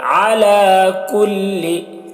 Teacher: علی عین ہے حلق سے ادا کریں گے